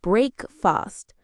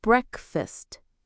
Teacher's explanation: Some learners pronounce the EA clearly, like breakfast, but native speakers often say breakfast. Yes, the A sound becomes a schwa